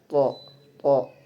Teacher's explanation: Kemudian dia juga termasuk mahmus, yaitu huruf yang ketika diucapkan terdapat getaran di pita suara. Kemudian dia termasuk ee huruf yang mufakham tebal. · Huruf th itu termasuk makhraj asnaniwi juga. Tetapi dalam tarikatul termasuk infijari adanya tekanan. Kemudian dia juga termasuk mahmus, yaitu huruf yang ketika diucapkan terdapat getaran di pita suara.